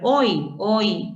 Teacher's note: en el caso de Uruguay tenemos que la y toma el valor de I una vocal cerrada esto ocurre cuando la y se encuentra al final de sílaba